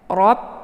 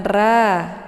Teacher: Ra dibaca tebal karena dia adalah posisinya harkatnya fathah ya. Rob jangan ra, tapi bentuk lidahnya agak sedikit tertutup. Kalau ra itu dia mulutnya terbuka.